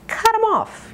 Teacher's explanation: you can drop the th